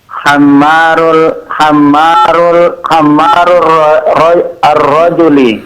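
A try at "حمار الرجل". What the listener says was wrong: Naam, itu bacanya himar, bukan hammar. Himar. Artinya keledai.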